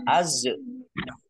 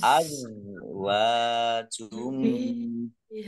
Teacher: Zak sukun bukan kol-kolah, jangan dipantulkan. Jangan dibaca az.